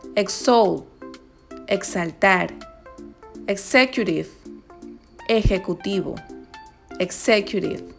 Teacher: También suena como la GS cuando va antes de vocal acentuada